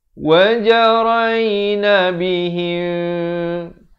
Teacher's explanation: Kena dengung 2 harakat. Sekarang ni mim mati bertemu ba. Ikhfa syafawi juga dipanjangkan 2 harakat.